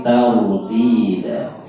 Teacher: ra dibaca tebal ya, tafkhim